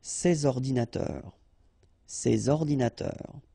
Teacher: you should make the liaison between S and O